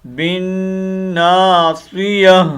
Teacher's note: گول تا کو ہا سے بدلیں گے